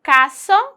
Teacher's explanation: Yo digo caso con sonido de S, ahí aplicando el cesseo con S